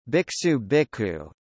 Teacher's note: A sibilant assimilates to a preceding k as an aspirate